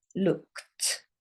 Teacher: it ends in an ED, which shows you it's past tense, but it sounds like this. Looked. It sounds like a T.